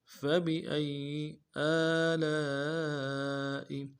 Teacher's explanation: حمزہ کو یا کے ساتھ ملانا ہے، یا کے اوپر تشدید ہے، زور دیں گے